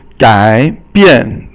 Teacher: So 改 is third tone, and 变 is fourth tone